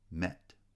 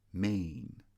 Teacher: met is also a lax vowel e met but main is a tense vowel main